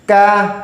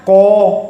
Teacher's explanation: Jika tekanan suara tidak ke langit-langit, melainkan tekanannya ke bawah, artinya tidak mengarah ke langit-langit atas, maka huruf itu haknya adalah dibaca tipis, tidak boleh tebal. Maka kaf tipis. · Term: huruf istifal